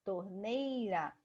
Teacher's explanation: Torneira, o NEI é a mais forte. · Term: paroxítona